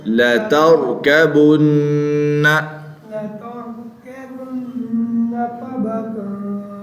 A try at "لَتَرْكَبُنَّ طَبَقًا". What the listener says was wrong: غنہ نہیں ہونا ادھر, عین آ گیا نا. عین میں رفع حلقی میں سے ہے جناب, عین آ گیا.